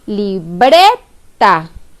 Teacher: Si yo pronuncio la palabra libreta, la sílaba que yo pronuncio con mayor fuerza de voz es la sílaba bre, porque yo digo libreta. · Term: sílaba tónica